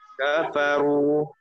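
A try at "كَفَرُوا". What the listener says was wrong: Itu tipis, masih tipis itu. Lagi tebalkan. Masih tipis. Tipis itu. Kafaru itu tipis. Kafaru.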